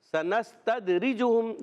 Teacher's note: را کے نیچے زیر ہے، را کو باریک پڑھنا ہے، اور جیم پر پیش ہم، یاد رکھیے میم ساکن کے قاعدوں میں سے قاعدہ ہے کہ میم ساکن کے بعد دوسری میم آ گئی اب یہ قاعدہ ہو جائے گا ادغام شفوی، یعنی ایک الف کا ہم نے غنہ کرنا ہے۔